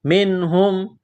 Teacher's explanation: منہم نون ساکن کے بعد ہا ہے حروف حلقی ہے یہاں پر غنہ نہیں کریں گے اظہار کریں گے